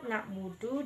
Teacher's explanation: Nah, pada kalimat na'budu di mana terdapat huruf ain yang makhrajnya di tengah tenggorokan